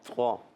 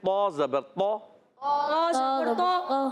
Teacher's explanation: موٹا بھی ہو گیا ہونٹ گول بھی نہیں ہوئے اور تھک کی آواز بھی نہیں ہے